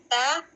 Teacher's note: تا کو زبان کے اس برابر اوپر کے دو دانتوں کے جڑ سے لگا کر ادا کیا جاتا ہے